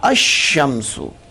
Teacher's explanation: تو لام کو شین کیا، تو جب لام کو شین کیا تو پہلا ساکن دوسرا متحرک، دونوں ایک جنس کے، تو ادغام ضروری ہوا. تو پھر شین کو شین میں گم کیا تو پڑھا گیا الشمسو.